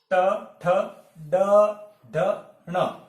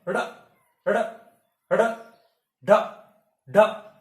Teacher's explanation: ऐसा लग रहा है जैसे अंदर से कोई फेंक रहा है, तो इनको उत्क्षिप्त व्यंजन कहते हैं